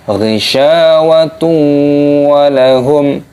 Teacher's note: dhammah tanwin bertemu dengan wawu, dimasukkan, diidghamkan dengan disertai berdengung